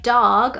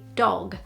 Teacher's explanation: in british english these sounds are a lot more closed and narrow